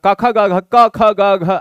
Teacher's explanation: ऐसा लगता गले से आ रहा तो कंठ हो गया